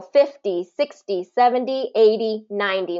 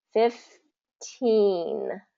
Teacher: those tens numbers have the D sound in them and the Teen numbers so 15 have the T sound